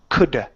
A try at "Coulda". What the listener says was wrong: It's a challenge for you to move the tongue back. I can still understand what you're saying, but just working on that pronunciation, it'll help with some words when people can't tell the difference between a th or a d sound. Okay, that's the risk that you play with some of those d and th sounds.